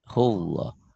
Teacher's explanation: Seakan-akan ada W-nya. Tapi jangan hullah. Jangan yang sempurna. W-nya sekedar lewat aja.